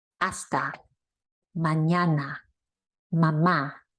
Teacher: So the A is pronounced A, like the A in father, except it's shorter. You don't drag it out.